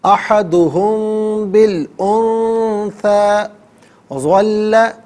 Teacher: میم ساکن کے بعد جب با آ جائے تو میم ساکن کو غنے کے ساتھ ادا کرتے ہیں. احدہم بالانثى ظل، وجہ علیحدہ ہے، ہو علیحدہ، ملا کر پڑھیں گے وجہہ.